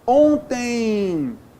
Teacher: Ontem, ditongo decrescente nasal também